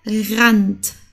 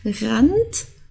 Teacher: dieses R das rollende R haben wir nicht im Hochdeutsch okay also das R kommt hier aus dem Hals · wir ein R haben also hier und danach ein Vokal kommt dann sprechen wir das R aus dem Hals aus okay also ist das muss aus dem Hals kommen als würdest